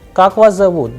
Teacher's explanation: The person is asking a question, so the sound would go higher at the end.